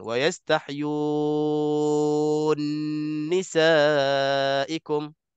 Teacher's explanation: Bila huruf ni sama-sama nun dengan nun, bacaan Susi selain daripada bacaan kita, idghamkan nun ke dalam nun. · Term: idgham kabir